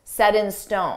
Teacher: notice we have a t between two vowels so we can pronounce that t as a soft D